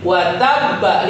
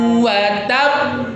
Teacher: Selesaikan dulu urusan dengan tasdidnya baru keluarkan qalqalahnya ya. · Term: qalqalah bertasydid diwakafkan